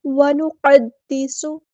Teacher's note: قاف کو پر لیٹر ہے، ہیوی لیٹر ہے، اس کو پورا ادا کرنا ہے